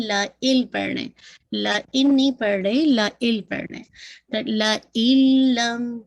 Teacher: مکمل ادغام ہو رہا ہے، کمپلیٹ ادغام ہو رہا ہے. اسی لیے دیکھیے لا ان نہیں پڑھ رہے، لا ال پڑھ رہے. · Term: ادغام کامل